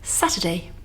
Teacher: Here in Saturday we have the UR spelling again, but this time it's weak, not strong. So we use a schwa sound.